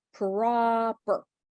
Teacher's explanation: Okay, and it's not pair, it's per. We're trying to skip from the p to the r, like very fast.